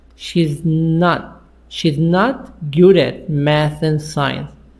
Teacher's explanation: you have to stop on T and then take a bridge to continue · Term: unreleased